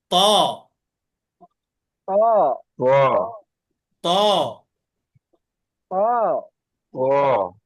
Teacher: واضرب واضرب ত তায়ের মতো করে ত ডালটা একই জায়গা থেকে জিব্বার আগাটা উপরে দুই দাঁতের গোড়াতে লাগবে